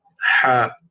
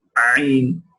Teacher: Look how the epiglottis move backwards for the ha. It is not as strong as for the ayn. The ayn goes all the way back.